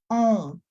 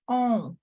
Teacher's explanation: Third nasal sound, on. My lips are automatically moving to get that sound out, on, but it's coming through nasal passageway